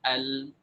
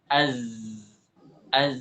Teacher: ketika diucapkan tidak terlalu mengalir dan tidak terlalu tertahan jadi setengah-setengah